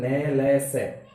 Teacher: दंतमूल, जहां से दांत निकल रहे हैं मसूड़े में, उस हिस्से के जाकर के जीवा स्पर्श करती है इनका उच्चारण करते समय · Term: वर्त्स्य वर्ण